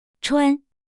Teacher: First tone high flat stays high and steady.